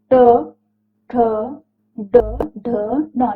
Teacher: इनके उच्चारण में जीभ को कठोर तालु के पिछले भाग में स्थित मूर्धन्य को स्पर्श करना पड़ता है।